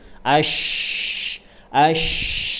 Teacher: tafasyi, menyebarkan angin ke seluruh rongga mulut. Ash, ash, jadi sangat besar, hembusannya sangat keras.